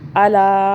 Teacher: لا کو کھینچا، اوپر چھوٹی مدہ ہے، 3 الف کے برابر کھینچا۔